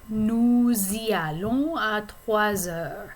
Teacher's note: normally the S at the end of nous would be silent, but because we're attaching it to the pronoun I, which is like a vowel sound, we have to have a liaison.